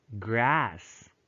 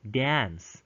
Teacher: evidence of lengthening of the american a ah in certain environments mainly before voiceless fricative for example s is a fricative and it's voiceless so grass